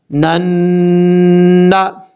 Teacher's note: وَيَقْتُلُونَ، اب یہاں پر اس نون کو لام کے بعد جو نون ہے اس نون کے ساتھ، جس نون کے اوپر شد ہے یہاں پر ملائیں گے، نون، نون زبر نن، نون زبر نا، نن، نون کے اوپر شد ہے، غنہ کریں گے ایک الف کی مقدار